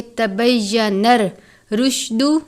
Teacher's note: را کے اوپر تشدید بھی ہے، را کے اوپر پیش کی علامت بھی ہے، را کو پر پڑھیں گے اور سختی سے پڑھیں گے